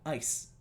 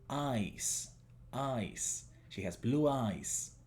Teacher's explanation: el largo de I sigue siendo el mismo que en la palabra ojos y no el mismo de la palabra hielo.